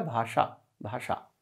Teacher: ताल और दांत के बीच में मुर्धा एक अंग है वहां पर अपनी जीभ को लगाना है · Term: मूर्धन्य